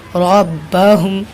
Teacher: तशरीद वाले हर्फ को 2 बार पढ़ेंगे, एक पीछे वाले से मिलाकर और एक हरकत के साथ